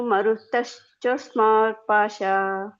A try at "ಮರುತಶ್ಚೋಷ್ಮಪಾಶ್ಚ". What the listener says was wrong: ಇಲ್ಲಿ ಮರುತ ಹೇಳ್ತಿರಲ್ಲ ಮುಂದೆ ಚೋ ಹೇಳಬೇಕು